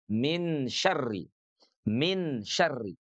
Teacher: Jadi nunnya tidak masuk ke huruf syin, tidak min syari tentu saja ya dan juga tidak tetap berada di tempatnya ya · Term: ikhfa